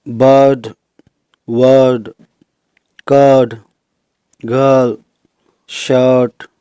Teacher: अर की, जिसमें अ के बाद र की साउंड भी आती है, और जनरली इसमें IR, OR, UR, ER इस तरह से प्रयुक्त होते हैं, जैसे ये बर्ड, वर्ड, कर्ड, गर्ल, शर्ट।